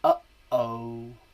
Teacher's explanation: The glottis. This is called the glottal stop. It is the unvoiced glottal plosive.